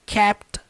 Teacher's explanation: Kept, no passado, termina com T e a próxima palavra começa com T, ou seja, na hora da pronúncia vai juntar e formar uma coisa só.